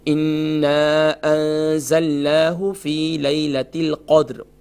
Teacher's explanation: ایک تو یہ کہ نون مشدد ہے، کمپلیٹ غنہ ہوگا، اس کے ساتھ الف مدہ ہے، ایک الف کی مقدار کھینچیں گے.